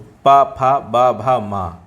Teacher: बा का उच्चारण स्थान ओष्ठ है